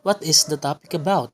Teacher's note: since it is a question it rises at the end so now the last term is stressed and the first syllable